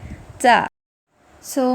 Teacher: جب زبان کی نوک اور اوپر والے سامنے کے 2 دانتوں کی جڑوں سے لگے گی تو تا ادا ہوگا اور تا کی ادائیگی میں ہلکا سا ایئر فلو ہے